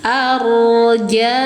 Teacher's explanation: Wal malaku ala ni panjangkan empat boleh lima harakat mad jaiz munfasil arja rnya dibaca tafhim ya karena sebelum ro berharakat fathah rnya harus dibaca tafhim tebal naik pangkal lidah sambil dialirkan sedang sifat tawas ro arja nah ini bedanya ya yang ini dibaca Baca mad wajib muttasil.